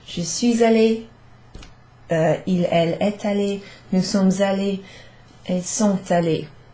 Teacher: if you hear that s or t in the middle of that allé sentence, it's just a liaison